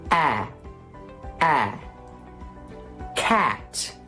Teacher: It's a blend of an ah and of an eh. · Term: ash sound